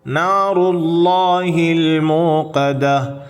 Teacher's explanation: இந்த தாவை ஹாவாக நிறுத்துகின்ற பொழுது சக்தாவுடைய ஹாவாக உச்சரிக்க வேண்டும்.